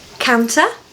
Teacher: Make sure you pronounce that T for a British accent.